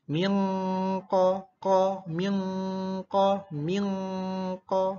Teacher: Nun sukun bertemu qaf, maka harus dibaca dengung yang lama dan samar ke qaf. Qaf kan hurufnya di ujung sini ya, di pangkal sini. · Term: ikfa hakiki